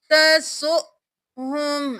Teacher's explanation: यहाँ पर हम हमजा के ऊपर जज़म है, झटका देकर पढ़ेंगे, वाउ खाली है, इसको नहीं पढ़ेंगे।